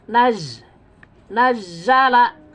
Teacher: Nazala ini Zai ditasdid ya jadi harus terdengar tekanannya